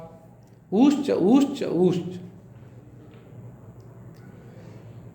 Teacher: पहले ऊ माने ह्रस्व, फिर ऊ दीर्घ, फिर ऊ प्लुत। ऊ में जितना समय लग रहा ऊ में उससे अधिक समय, ऊ उसमें और ज़्यादा समय। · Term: ह्रस्व दीर्घ प्लुत